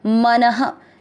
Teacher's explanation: मन, दोनों अक्षर पूरे, दोनों में अ मिक्स करेंगे मन, न में अ की मात्रा तो विसर्ग को पढ़ेंगे ह